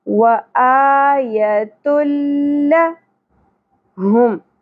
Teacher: لام اور را جب بھی تنوین یا نون ساکن کے بعد آتے ہیں تو ادغام بغیر غنہ کرنا ہوتا ہے، ملانا ہے ہم نے لیکن غنہ نہیں کرنا۔ نون ساکن کی آواز کو ناک میں نہیں لے جانا، ٹھیک ہے؟ تنوین کے اینڈ پہ بھی نون ساکن کی آواز ہوتی ہے تو وہ ہم نے اسکپ کرنی ہے۔